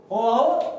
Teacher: अब कंठोष्ठ क्या था भाई, कंठोष्ठ क्या, कंठ और ओष्ठ, एक तो कंठ का इस्तेमाल होगा, साथ में होठों का इस्तेमाल होगा भाई